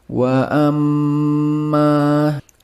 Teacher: Wa amma the mim with a tashdeed must read with nasal sound. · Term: ghunnah musyaddadah